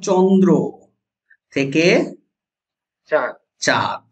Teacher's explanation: নাক দিয়ে যখন শ্বাস বায়ু বের হবে বা নাসিক্য ব্যঞ্জন বর্ণ যেগুলো সেগুলো লুপ্ত হয়ে গিয়ে চন্দ্রবিন্দু হয় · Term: নাসিকী ভবন